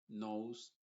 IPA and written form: noʊz (Nose)